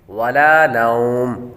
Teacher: ولا نوم، جب وقف کریں گے تو میم پر جو تنوین ہے وہ ختم ہو جائے گی اور آخری حرف پر عارضی سکون آ رہا ہے، یعنی وقف کی وجہ سے، تو یہاں پر مد لین عارض ہوگی